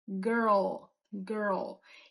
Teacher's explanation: Quando a gente tem essa retroversão do R, depois, logo em seguida, a língua vai para frente de novo pro L.